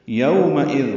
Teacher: یومئذ واو لین ہے، میم کو جلدی پڑھیں گے، حمزہ یا کی شکل میں ہے.